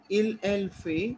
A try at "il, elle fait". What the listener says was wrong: ना फेट नहीं है बच्चे, फे, क्योंकि टी वुड